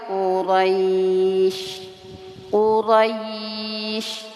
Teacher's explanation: rnya dibaca tebal ro harakatnya fathah Qurais kemudian di sini ada madlayin atau madlin pembacaannya lunak lembut ya dan panjangkan ya Kemudian syinnya disukunkan untuk panjang harakat Mad layin atau madlin itu